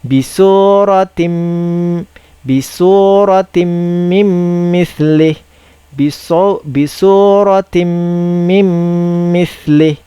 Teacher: Bacaan dia adalah menggabungkan bunyi nun kepada huruf selepasnya dengan dengung. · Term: idgham ma'al gunnah